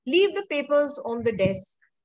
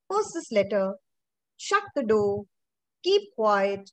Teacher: can you see the tone falls in the end, then it also shows that my sentence is complete. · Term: falling intonation